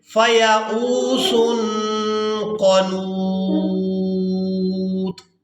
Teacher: ہم نے وقف کی وجہ سے طا کو ساکن کر دینے ہیں، نون کو واو ساکن اور طا ساکن کے ساتھ ملا کر ادا کریں گے۔